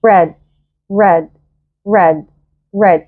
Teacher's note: الار هي مش را، لساني مش بيلمس سقف فوق الفم